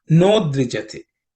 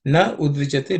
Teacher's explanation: The na and udvichate join, that is the a in the na and the u join to make o sound. So it becomes no dvijate. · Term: sandhi